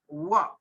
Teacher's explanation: व का उच्चारण स्थान है दंत एंड ओष्ठ। दांत और ओठ।